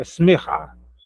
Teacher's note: A palavra começa com kamat, lá na primeira sílaba, reduz para chevar. Aí fica um somzinho fraco do E. Às vezes nem é pronunciado, é smerrar.